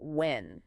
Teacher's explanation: When referring to time ends with an N, a soft nasal sound that hums in your nose